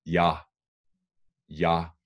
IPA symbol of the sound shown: ˈjɑ